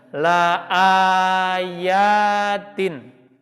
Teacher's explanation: Si alif ini atau hamzah ini harus dipanjangkan. La ayatin. Ya-nya juga ada tanda fathah panjang.